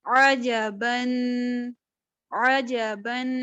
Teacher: جین جو ہے اس کے لیے آپ نے اپنی زبان کو تالو سے لگانا ہے، ہاں وسط لسان بالمقابل اوپر کا تالو